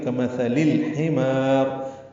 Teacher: ہا وسط حلق سے ادا ہوگا، اس سے پہلے لام پڑھا جا رہا ہے، اظہار قمری ہے، را باریک ہے. · کمثلی جلدی ادا کریں گے، تھا کو نرمی سے ادا کریں گے، لام کو لام سے ملا دیں گے